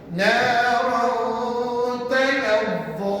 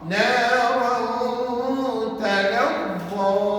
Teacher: Kita tadi saya tunjukkan kan, nak sebut makhraj nun mati dengan tanwin sama, iaitu hujung lidah tekan pada gusi atas. Tapi oleh kerana hukum ini namanya ikhfa, maka hujung lidah kamu jangan kamu tekan pada gusi. Sebab kalau kamu tekan pada gusi betul-betul, nanti bunyinya jadi jelas, izhar pada dia.